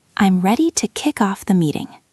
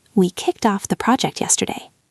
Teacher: the connection between the words kick and off. It sounds like one word, kickoff.